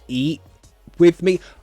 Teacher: I use a glottal T you don't have to · It might sound more natural to use a glottal T.